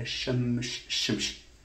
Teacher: Shamsun in Arabic is a shamsh, shamsh, sh, and then you have m, and then you have s. So the s has taken the palatal feature, palatality, from this first sh. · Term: distant assimilation